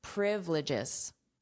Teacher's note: we have the syllable stress on the first syllable